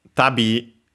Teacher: accent on the last syllable